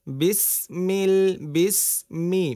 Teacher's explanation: মিম ঠোঁটের শুকনো অংশ থেকে